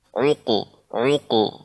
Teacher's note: Jadi bukan hanya sekedar uqe, bukan hanya sekedar uke, akan tapi lebih tebal lagi uqu ya, karena qaf adalah huruf isti'la ya